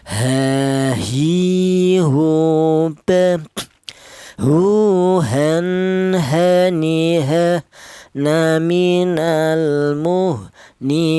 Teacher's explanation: Huruf h ini keluarnya huruf berasal dari pangkal tenggorokan